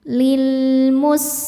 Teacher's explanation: sin salah satu sifatnya yang tidak punya lawan namanya shofir artinya berdesis.